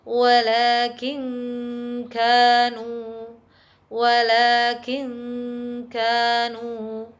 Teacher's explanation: nun sukun masih tetap terdengar secara samar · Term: bacaan Ikhfa